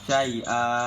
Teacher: hukumnya mat iwad karena ada fathatain di akhir ayat dan cara pembacaannya itu panjang